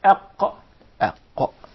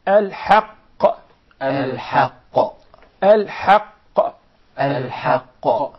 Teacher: The قاف is articulated from the deepest part of the tongue, and what lies opposite to it from the roof of the mouth in the area of the soft palate.